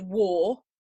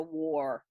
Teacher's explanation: the word war W-A-R, has no R curl to it